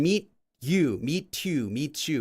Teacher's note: The T and the Y makes like a ch sound